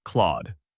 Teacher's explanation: Begin with the crisp K sound, followed immediately by L so it blends as KL. Keep it clean and quick.